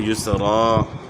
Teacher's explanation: دو زبر پہ جو ہے نا جب بھی وقف کیا جاتا ہے دو زبر الف سے تبدیل ہو جاتی ہیں، تو یسرن جو ہے نا وقف کریں گے تو یسرا، ان مع العسر، یہاں نون مشدد ہے، نون مشدد میں جو ہے ایک الف کی مقدار کے برابر غنہ ہوگا، اور عین کے بعد گلے کے درمیان سے آپ نے نکالنی ہے۔